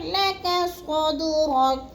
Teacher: صاد کو پر کر کے پڑھنا ہے اور دال کو ہلانا ہے کیونکہ یہ حروف قلقلہ میں سے ہے